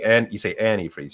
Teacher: Like you say antifreeze, you put the emphasis on the A.